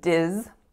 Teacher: So in this particular word, Disney, we're actually making a voiced Z sound, even though it looks misleadingly like an S